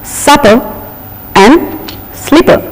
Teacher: it is a light and plain p in English language